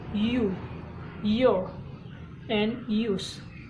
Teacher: Yah sound is called palatal approximant, which means that you from a narrow space in the middle of your mouth with your tongue. The yah sound is made through the mouth and is voice, which means you vibrate your vocal cords to make the sounds.